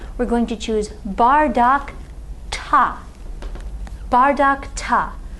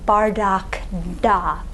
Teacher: Notice that bardak ta is a lot easier to say than if we tried to say bardak da or something like that. Bardak ta, voiceless consonant at the end of the noun, voiceless consonant at the beginning of our locative case ending.